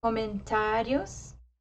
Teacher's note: the a is emphasized and the ending is softer more subtle than the a